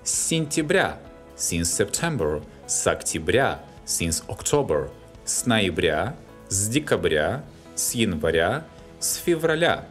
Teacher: С марта – since March, с апреля – since April, с мая – с июня, с июля, с августа. The names of autumn and winter months are stressed on the ending.